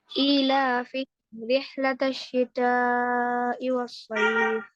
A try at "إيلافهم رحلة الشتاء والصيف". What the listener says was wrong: 3 only you did you're not even getting my points 4 haraka إلافهم رحلة الشتاء والصيف